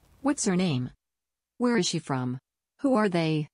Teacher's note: you stress on the first part and then you fall at the end of the question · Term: wh questions